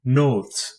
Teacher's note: it is a coronal nasal like l it is usually more dental than alveolar it is pronounced like the n in no one it is